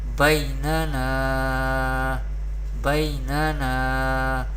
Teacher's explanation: So this is, therefore here alif madda rule is happening here, and madda rule we pronounce madda letter by stretching up to one alif or two harakat. And ya leen we pronounce ya leen without stretching or without sudden pausing the voice